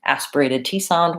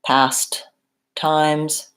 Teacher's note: Sometimes people will try to say best or past, and it'll sound more like best or pass. So make sure when you're saying your S that you go then into the T and that there's a aspirated T sound. We really do hear those T's.